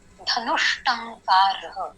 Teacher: तो यहाँ पे धनु के बाद में जो विसर्ग है उसका षकार होने वाला है, धनुष्टंकार। यहाँ पे विसर्ग का षकार हो गया